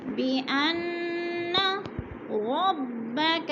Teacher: بأن کی نون مشدد ہے، غنہ کریں گے، ناک میں آواز لے جائیں گے، جیسے بأن ربك، ربك، را کو پر پڑھا جائے گا، او پہ جو ہے وولین ہو رہی ہے، وولین کو لمبا بھی نہیں کرنا، جھٹکا بھی نہیں دینا۔